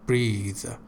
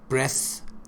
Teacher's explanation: And the verb form is voiced. It means there is a buzzing sound in that. Breathe. But breath doesn't have any buzzing sound.